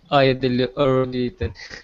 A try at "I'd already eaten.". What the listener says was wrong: Yeah, I'd already eaten. I'd. I'd already eaten. I'd. It's like saying, I'd. I'd already eaten. You can see how my jaw, yeah, my mouth opens, right? I'd, and it closes. There's no H. Forget about the H, guys, yeah?